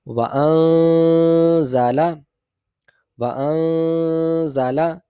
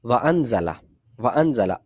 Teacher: جی اب آپ میرے ساتھ مل کر اس کو پڑھیے گا. نون کی آواز واضح نہ ہو، بلکہ کیا ہے کہ نون کی آواز مخرج میں اپنے چھپی ہوئی ادا ہو رہی ہو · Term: اخفا